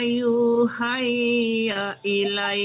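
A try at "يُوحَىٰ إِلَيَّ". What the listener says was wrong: Kenapa hai dibaca itu kan nggak ada ya? Ya itu cuma ininya aja bentuknya doang, tapi tidak ada titiknya. Jangan dibaca ya.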